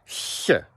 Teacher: That kind of soft sound made on the hard palate with your tongue. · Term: slender